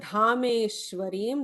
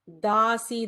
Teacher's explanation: that dha is Mahaprana there. Dasi, the regular da.